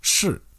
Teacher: The fourth tone is a falling tone. It sounds like 是, and this one means to be in Mandarin.